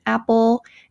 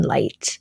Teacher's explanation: there is the dark L as an apple and then the light L as in light